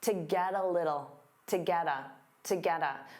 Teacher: So to becomes that unstressed ta, get a combines together, get a, to get a, to get a.